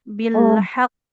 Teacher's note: Nah, karena qofnya tebal dia pantulnya tebal. Sama catatan karena bertasdid dia pantulannya lebih kuat. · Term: qalqalahnya tebal